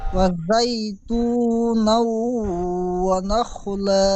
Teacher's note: ওয়াজ্জাই হবে না, ওয়াউ সাবার ওয়া, জাই ইয়া সাবার জাই, ওয়াজাই, ওয়াউটি আলাদা হবে